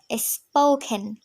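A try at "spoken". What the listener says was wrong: Yes, স্পোকেন।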